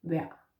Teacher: Just say vejr. Don't say the R. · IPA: vær